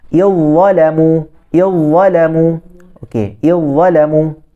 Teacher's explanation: Maksudnya sifat itu yang paling kuat, yang tebal dan yang kuat. Maka menenggelamkan huruf zal. Maka bila disebutkan huruf zal tidak bunyi.